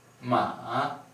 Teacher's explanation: The third tone is probably the most difficult one, and it's called low dipping. Now the pitch goes from a high pitch to a low pitch, and then again to a high pitch.